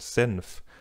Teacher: Bei Senf beeinflusst das [f] den vorangegangenen Laut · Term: regressiver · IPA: [zɛnf]